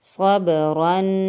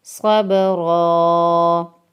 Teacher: صرف دو زبر پر ہمیں چینج یہ کرنا ہے کہ وقف کی صورت میں ایک زبر پڑھنا ہے